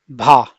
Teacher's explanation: भा आपका स्पर्श भी है घोष भी है महाप्राण भी है और ओष्ठ भी है